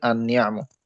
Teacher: আলিফ লাম আসলে উচ্চারণটা আনিয়াম হয়েছে। এই লাম সাকিনের উচ্চারণটা বাদ হয়ে গেল। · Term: তাশ